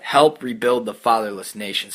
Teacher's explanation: It's a trochaic meter. It's falling meter, they'd say, because it's stressed, unstressed, stressed, unstressed, stressed, and then it's technically too unstressed because fatherless.